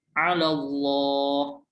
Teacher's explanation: Yang dibaca tebal, 'ala Allah, yang lam jalalah, betul, dibaca tebal. Jadi dibacanya 'ala Allah, tebal, oke.